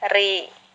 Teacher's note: Ini bahkan. Nah, bila mana ro tersebut berharokat kasroh, dibaca tipis